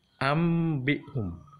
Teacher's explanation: Di dalam tulisan nggak ada huruf mim, tetapi dalam bacaan harus huruf mim.